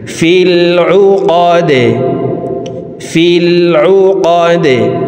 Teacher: দাল কলকলার হরফ নিচের দিকে ধাবিত করে ধাক্কা দিয়ে দালকে সাকিন করে ফেলব।